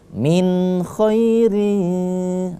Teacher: tidak kita dengungkan karena harus jelas karena di situ adalah izhar